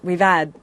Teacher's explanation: he's dropping his h